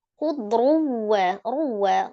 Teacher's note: Tanwin ketemu huruf waw, idgham bi gunnah. Diidghamkan ke huruf waw disertai dengan dengung ya atau gunnah. · Kemudian sin, ada sin berharakat kasrah tanwin bertemu dengan huruf kha, dibaca izhar ya, izhar halki karena huruf kha itu adalah salah satu huruf dari al-halki atau tenggorokan ya. Tepatnya tenggorokan bagian atas, maka dia dihukumi izhar atau dibaca dengan jelas ya.